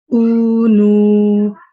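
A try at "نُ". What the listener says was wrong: It's better. You still got a slight ghunna there. It can still be cleaned up a little bit more. Ooh. So as you say ooh, remember this is what I have to say at the ending of the noon.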